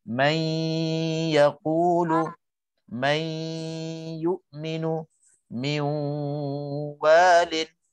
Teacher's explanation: kita dah masukkan nun mati ke dalam huruf idgham itu beserta dengung 2 harakat. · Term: idgham ma'al ghunnah